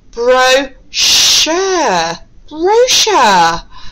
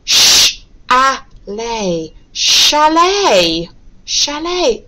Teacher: we're pronouncing the CH sound today as shh